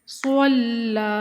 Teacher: لام مشدد ہے، اس کو رک کر سختی کے ساتھ پھر 1 الف کے برابر لمبا کریں گے اور صاد کو موٹا کر کے پڑھیں گے، پر حروف میں سے ہے صاد۔